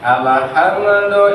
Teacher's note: alif ke lam pak jangan sampai terjadi qalqalah biasa aja